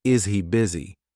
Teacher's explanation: Which means, is he busy? But we actually omit the H sound, and it becomes easy busy.